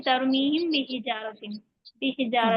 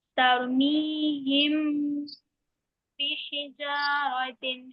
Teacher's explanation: اخفاء بھی کریں گے اور غنہ بھی کریں گے